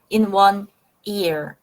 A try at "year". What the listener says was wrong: You still a little bit said ear instead of year. You want to year. Yes.